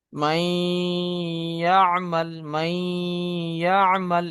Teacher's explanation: নুন সাকিনকে ইয়ার সঙ্গে মিলিয়ে একালি পরিমাণ গুণনা করে পড়তে হবে